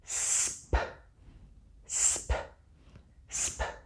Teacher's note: After you have completed the S portion of the sound, move your teeth apart while you close your lips. The P portion of the sound is created when you release your lips outward while sending air from your mouth.